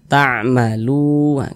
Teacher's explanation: Ta'malu kita panjangkan 2 harokat mad tabi'i